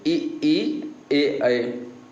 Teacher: अग्र स्वर, अग्र मतलब आगे की जिह्वा जिसमें प्रयोग में लाई जाएगी।